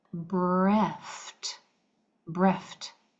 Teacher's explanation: This ED is going to sound like a T because the F is a voiceless sound.